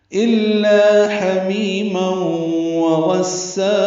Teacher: ما میم پر دو زبریں ہیں، تنوین اور اس کے بعد واو آنے کی وجہ سے ادغام ناقص مع الغنہ ہے